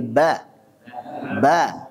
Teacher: bukan bo tapi ba ba tipiskan